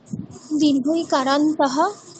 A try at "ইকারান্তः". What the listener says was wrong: দীর্ঘ ইকারান্ত দরকার নেই, যখন বলবে ইকারান্ত, ইটা একটু টেনে দেবে, তাহলেই হয়ে যাবে। দীর্ঘ ইকারান্ত এরকম বলার দরকার নেই। ঠিক আছে, ইকারান্তः।